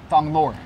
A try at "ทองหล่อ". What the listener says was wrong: Wait, it's actually pronounced Thong Lor without TH, just only T. Thong Lor.